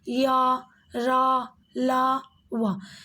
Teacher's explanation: जब आप य, र, ल, व का उच्चारण करेंगे तो आपका जीभ मुख के किसी भी भाग को स्पर्श नहीं कर रही है। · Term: अंतस्थ व्यंजन